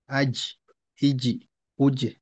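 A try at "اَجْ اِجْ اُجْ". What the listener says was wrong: জি, এখানে কিন্তু একটু সমস্যা হচ্ছে, যে কলকলার দ্বিতীয় অংশটা পুরা বাতাস বের হয়ে যাচ্ছে, অর্থাৎ আজ।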